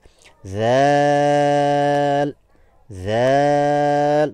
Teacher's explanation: উপরের দাঁতের সাথে স্পর্শে জিহ্বার অগ্রভাগ এবং বাহির বের হয়ে থাকবে জিহ্বার অগ্রভাগ দাঁতের সাথে স্পর্শ হবে